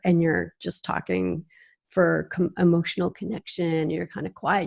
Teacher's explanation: you can hear how my voice gets gravely this is called vocal fry